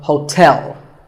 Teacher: There are 2 syllables, ho and tell, like the English word tell as in tell me. The stress is on the second syllable,